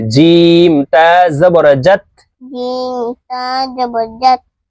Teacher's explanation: জিব্বার মধ্যখান থেকে জিম হরফ উচ্চারণ হবে